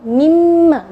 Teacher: misalnya eh e mimma kalau asalnya Min Ma ya mim Ma ketika digabung mimma jadi nunnya tidak kelihatan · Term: idgham